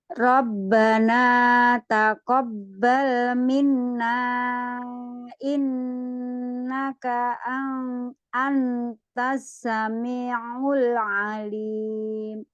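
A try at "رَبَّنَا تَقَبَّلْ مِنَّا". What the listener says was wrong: Nah, di minna tahan juga di minnanya, gunanya.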